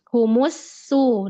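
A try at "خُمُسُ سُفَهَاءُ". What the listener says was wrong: Nah, itu agak tebel ya Mbak di sin domahnya.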